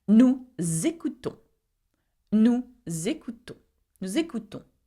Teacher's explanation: nous ends with an S and écoutons begins with a E, okay, a vowel. So again, we make the liaison.